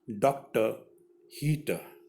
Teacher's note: The last r sound is not pronounced, so it ends with the sound, that is very soft.